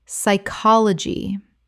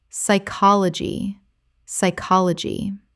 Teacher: The p is completely silent and the Y makes a short I sound.